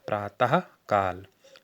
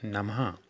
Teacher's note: जो विसर्ग का उच्चारण होता है ये हा की तरह होता है